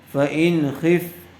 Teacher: نون ساکن کے بعد حروف حلقی میں سے خا آیا ہوا ہے، اس لیے بغیر غننے کے جلد اظہار کر کے پڑھیں گے